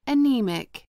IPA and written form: əˈniːmɪk (anemic)